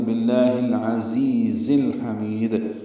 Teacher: حلقی میں سے بھی ہے، میم کو لمبا کریں گے اور دال ساکن پہ قلقلہ کریں گے · ہا وسط حلق سے ادا ہوگا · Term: حروف حلقی